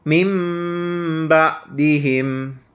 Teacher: Iqlab adalah apabila nun sukun atau tanwin bertemu dengan huruf ba. Namun, nun sukun dibaca menjadi mim sukun